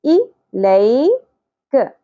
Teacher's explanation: لئی یا ساکن سے پہلے زبر ہے، نرمی سے ادا کریں گے، لے نہیں پڑھنا جو مجہول غلطی ہے